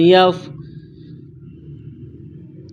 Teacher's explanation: اور یا کو صاد کے ساتھ ملائیں گے جزم کی وجہ سے۔ صاد یہاں ساکن ہے، صاد کو موٹا پڑھیں گے